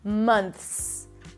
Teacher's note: You stick the tongue out for the TH, month. It's a soft TH, allow the air to pass, and then you bring the tongue back in for the S.